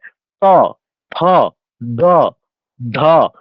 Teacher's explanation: দন্ত মানে কি, যেগুলো উচ্চারণ করার সময় আমার জিহ্বা মূল দাঁতে স্পর্শ করছে, ত, থ, দ, ধ। এগুলো উচ্চারণ করার সময় আমার দাঁতে স্পর্শ করে জিহ্বার অগ্রভাগ